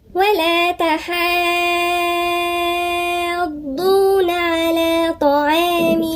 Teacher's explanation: يبقى نقولها 6 وبعدين نشدد شوية عند الضاد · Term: مد لازم